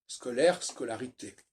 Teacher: le AI de scolaire, disparaît pour devenir un A